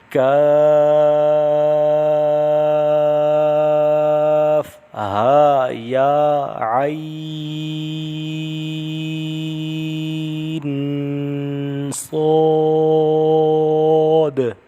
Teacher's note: عین آئے مجول ہو جاتا ہے، اس کو عین نہیں پڑھنا، عین مد کر کے پڑھنا ہے. اور عین آخر میں نون کی آواز پہ غنہ کرنا ہے، ناک میں آواز کو روک کر رکھنا ہے، اور صاد کی آواز کو موٹا پڑھنا ہے.